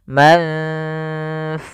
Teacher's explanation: ikhfa adalah membacanya ke huruf yang setelahnya atau disamarkan ke huruf fa-nya.